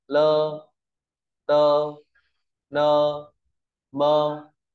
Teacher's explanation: sau thanh mẫu lưa tưa nưa và mua ta đọc thành ơ